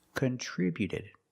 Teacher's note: the T before the ED is between vowels, so it's a fast D